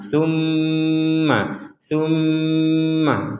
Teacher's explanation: ada mim bertasdid kita dengungkan